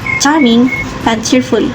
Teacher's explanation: The voicing is voiceless. The place is post-alveolar. Manner is affricate.